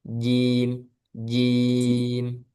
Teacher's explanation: jimnya jangan ada udaranya